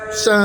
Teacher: rising tone second tone